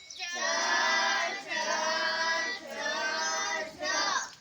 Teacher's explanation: અંદર જે તાળવું છે એ તાળવાને અડીને આપણી જીભ છે એ જીભ તાળવાને અડે છે અને પછી જે શબ્દ નીકળે છે એને તાલવ્ય કહેવાય